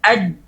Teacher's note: Pada saat kita katakan aj, lihat ini di gambar di sini ada ditunjukkan gambar pada saat huruf jim. Lihat bagaimana lidah langsung melengket ke langit-langit atas